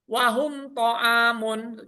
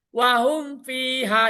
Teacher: jadi nggak ada samar, nggak ada dengung. Cukup mematikan huruf mim dan baca huruf setelahnya itu jelas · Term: izhar safawi